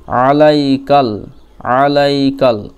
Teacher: এই কাপের সঙ্গে লাম ঈদগম হয়ে যাবে, মিলন হয়ে যাবে